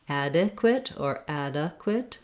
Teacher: because the add syllable is stressed, we have short, reduced, unstressed vowels in the second two syllables.